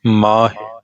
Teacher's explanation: ਮਮੇ ਨੂੰ ਕੰਨਾ ਦੀਰਘ ਮਾਤਰਾ ਹੈ ਦੀਰਘ ਪਾਠ ਹੋਏਗਾ ਹਹ ਨੂੰ ਸਿਹਾਰੀ ਲਘੂ ਮਾਤਰਾ ਹੈ ਲਘੂ ਪਾਠ ਹੋਏਗਾ